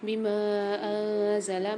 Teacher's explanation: میم کے ساتھ الف اور مد ہے تو یہاں پر 3 سے 4 الف کی مقدار میم کو کھینچ کے پڑھیں گے